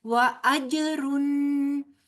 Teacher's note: جیم ساکن ہے اور یہ حروف قلقلہ میں سے ہے، لہٰذا ہلا کے پڑھا جائے گا، آواز باؤنس بیک ہوگی